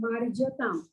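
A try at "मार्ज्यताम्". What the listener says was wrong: Marjyatam. Yakara has to come out in the mouth. Marjyatam.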